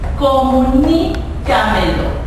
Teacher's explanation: Comunícamelo es esta palabra, y si contamos correctamente tenemos última, penúltima, antepenúltima, y la ni, que es en este caso la sílaba en donde recae la fuerza de pronunciación, está antes de la penúltima sílaba, lo que hace que esta palabra sea sobreesdrújula.